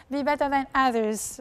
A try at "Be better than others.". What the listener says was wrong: Others, there's a missing S. Yes, it fell down.